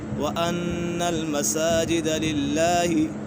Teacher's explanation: یہاں پر نون مشدد ہے، نون مشدد میں ہمیشہ غنہ ہوتا ہے